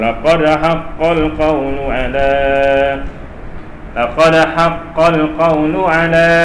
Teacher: dia bukan qalqalah kubra, dia qalqalah sughra, di tengah-tengah je.